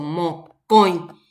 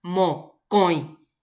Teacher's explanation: la fuerza de la pronunciación recae sobre la O. Y también la pronunciación de la O nasal, mocoin. Entonces, ambas cosas en uno.